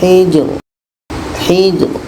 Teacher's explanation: Ro ini dibaca secara tarqik tipis. Hidradi kesimpulannya adalah ketika kita menemukan dua huruf sukun di akhir ketika berhenti dua-duanya tetap dibaca.